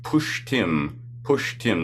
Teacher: This is like a retroflex sh sound with the tongue curled back, and then similarly with the t.